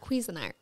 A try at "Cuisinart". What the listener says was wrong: Isn't it cuisine art? You say it like it's queasy. I think it's C. Isn't it C-U-I? I always pronounce it as Cuisinart. Cuisinart. Cuisinart, because it's but basically the word is cuisine.